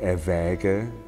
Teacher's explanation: the a that often provides problems um has to be quite open